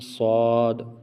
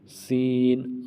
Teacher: تو صاد کو موٹا اور سین کو باریک